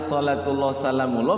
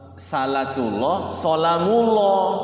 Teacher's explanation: Nah, salatullah salamullah, kebalik itu ininya, sod sama sin ya. Ada itu yang baca sinnya sodnya dibaca sin. Harusnya sholatullah salamullah, bacanya salatullah salamullah.